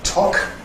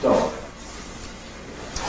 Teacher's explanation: If it were /tɒk/, you've got the /k/ exerting its pre-fortis clipping effect on the preceding vowel, but not in ‘dog’ /dɒg/. So that's another reason why they stay apart.